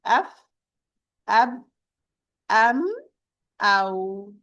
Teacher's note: They are the fa, the ba, the mim, and the waw, and of course the dhamma, because the dhamma, it is the daughter of the waw, sharing the same articulation point. They are all pronounced from the lips. We say f, ab, am, aw.